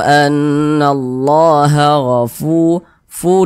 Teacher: yang memiliki tanda baca domah Nah maka huruf tersebut dibaca panjang sehingganya Fu dibaca panjang Mad thobii panjangnya dua harakat